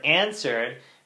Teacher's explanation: Because in answered, we're taking the nasality of the okay, and we're already anticipating that nasality when we produce the ah. So that ah is produced with some nasality.